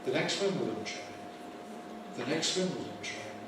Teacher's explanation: I drop the T from the end. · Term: eliding, Elide the T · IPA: [… ðə ˈneks ∖_wɪm_bl̩dən treɪn]